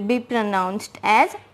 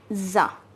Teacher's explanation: you will take this s and combine it with the next letter which is a vowel so it will become z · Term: liaison